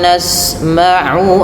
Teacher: Usahakan jangan sampai masuk ke rongga hidung karena makhraj tempat keluarnya ain tidak dari hidung tapi dari tenggorokan yang tengah